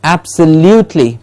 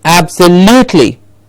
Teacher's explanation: You see, a part of the word is jumping up. Absa is said at the same level, and liu comes up and kli comes down again. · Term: stressed syllable